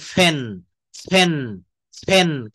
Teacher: এগুলো উচ্চারণের সময় মুখ দিয়ে বেশি পরিমাণে বাতাস বের হবে, অর্থাৎ দুটি ঠোঁট একত্রে করে উচ্চারণের সময় একসাথে মুখ দিয়ে বাতাস বের করতে হবে। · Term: অ্যাসপিরিয়েটেড